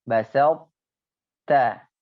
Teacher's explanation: Nah, jadi naqis, dia kurang idghamnya. Kurang masuknya ke huruf ta